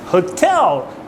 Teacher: you are stressing the second syllable right L so the hotel you need to really exaggerate the second syllable